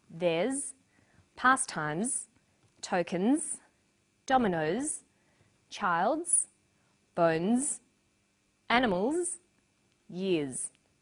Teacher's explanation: after vowels and diphthongs the final s is pronounced Z